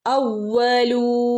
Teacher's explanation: വാന്റെ മുകളിൽ ശ്രദ്ധയുണ്ട്, ഒന്ന് കനപ്പിച്ചു കൊടുക്കണം കേട്ടോ.